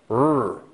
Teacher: the tongue is just curled a bit but up towards that alveolar ridge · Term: r sound